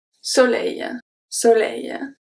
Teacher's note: The O is a short O, close O, and then the L is pronounced regularly.